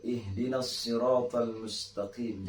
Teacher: Kemudian ketika kita melafalkan huruf qaf yang mempunyai sifat huruf qalqalah, ya, ketika dihidupkan di halak kita ini jangan terlalu kasar, akan tetapi harus latif, harus lembut. Ihdinas siratal mustaqim, jangan sampai ihdinas siratal mustaqim.